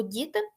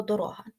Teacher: ди буде м'який а дорога - це твердий звук